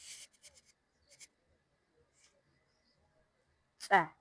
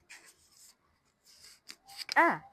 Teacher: the air must be completely sealed off from the lungs and forced out of the mouth in a dry, sharp pop. The sound is created by building and releasing pressure in the throat mouth.